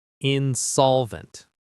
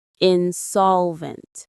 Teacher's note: The stress is in the middle.